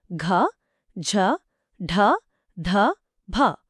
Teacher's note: ఇవి మహాప్రాణ నాదములు voiced aspirated